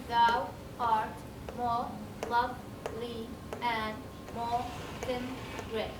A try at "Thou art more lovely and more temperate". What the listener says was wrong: You said temperate. You gave it 2 syllables. 2 syllables means this is 9. Temperate. Temperate. With the schwa, still temperate. So, still 10.